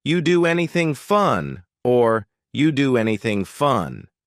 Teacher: The end sound N of doing connects with the beginning sound A of anything. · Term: linking sounds